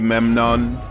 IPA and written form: ˈmɛmnən (Memnon)